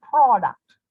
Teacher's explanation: The part pro is stressed, it's louder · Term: stressed syllable